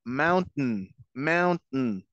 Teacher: con T, y hacemos el sonido de la N, mountain, mountain, tiene que hasta vibrar la nariz